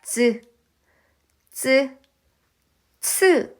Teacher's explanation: 혓바닥을 입천장 앞쪽에 단단한 부분에 대어서 나는 소린데요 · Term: 센 입전장 소리, 센 입천장 소리